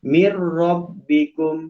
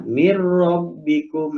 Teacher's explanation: Oh, idghamnya dimasukkan, bunyi nun mati dimasukkan kepada bunyi ro, tapi si ada gunnah, berarti mir rabbikum, si dibaca min tapi dibaca mir. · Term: idgham bila gunnah